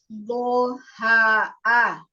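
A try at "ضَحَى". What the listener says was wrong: Dotnya di apa namanya di ini lagi, diitbakan lagi, dikuatkan lagi. Iya, tidak dibantu dengan bibir. Do, ha, a. Iya, setiap huruf tebal tidak dibantu dengan bibir.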